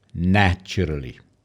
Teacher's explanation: if you listen to the word naturally the focus on the syllable is on the first syllable